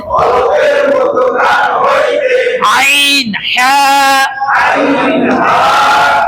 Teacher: দুই নাম্বার মাখরজ হলকের মধ্যখান হইতে আইন হা